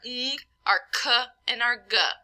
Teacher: We have velar, where the tongue touches the soft palate or the velum. And those are the ones in the back of the mouth, so our ng, our k, and our g. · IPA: /ng, k, g/